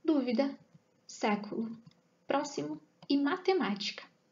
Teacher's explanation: sílaba tônica é a antepenúltima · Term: proparoxítonas